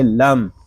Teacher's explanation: لام کو ہم میم کے ساتھ ہی ملا دیں گے، میم ساکن ہے، اس کو سکون کے ساتھ پڑھیں گے